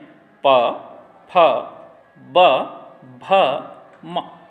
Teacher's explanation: होठों से बोले जाने वाले वर्ण ओष्ठव्य कहे जाते हैं